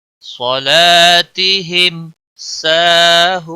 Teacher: واو مدہ ہے، ایک الف کے برابر کھینچ کر پڑھیں گے